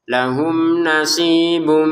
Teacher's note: Lahum di sini bertemu dengan nun, dibaca dengan jelas